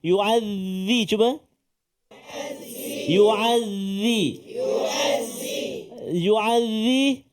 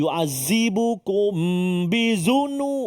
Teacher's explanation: Huruf zal hujung lidah keluar sedikit. Ada menyatakan sentuh gigi kaki atas ni.